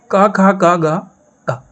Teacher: इनको जब आप बोलेंगे तो आपकी ध्वनि सीधे कंठ से निकलेगी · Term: कंठ व्यंजन